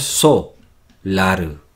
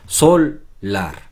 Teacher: Tenemos la pronunciación L escondida en la primera sílaba, en la so. Aunque hayamos dividido así, hayamos separado las sílabas así, nosotros pronunciamos sol, lar.